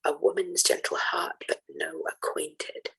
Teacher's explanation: in the first and third lines both, there is an added unstressed syllable at the end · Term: hypercatalectic lines